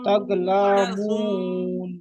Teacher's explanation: তাগলামুন মিমটা গুণনা করতে হবে একালি মিম মুশাদ্দাদ